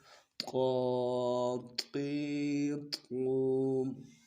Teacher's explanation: زبان کا جو سامنے والا حصہ ہے، اس کو اوپر تالو کے ساتھ لگانا ہے اور زبان کا بیچ اٹھانا ہے، پھر یہ لفظ موٹا ہو جائے گا